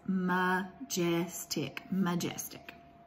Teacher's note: mark that first syllable as a schwa syllable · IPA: ə